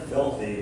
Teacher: We have dirty with our stress early on, and filthy with our stress early on